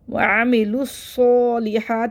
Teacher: लाम को स्वाद से मिला देंगे। मुद मुशद्द है इसको जल्दी पढ़ाएंगे और स्वाद को मोटा करके पढ़ना है।